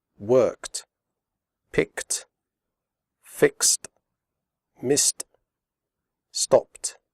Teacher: final ed is pronounced like t, as in the word hot. The e remains silent.